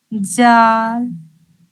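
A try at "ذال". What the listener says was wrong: جال نہیں، زال. جیسے سا کو ادا کی ہے نا، جو زبان کی نوک ہے، امیجن کیجئے کہ آپ زبان کی دیکھیے، زبان کو پہلے باہر نکالیے، بالکل اس کے نوک کو بالکل جو باریک ہے، اور اس کو، اور اس نوک کو لے جائیے آپ جو اوپر کا، جو سامنے کا جو دونوں دانت ہے، اس کے کنارے سے ملائیے. سا سا سا سا.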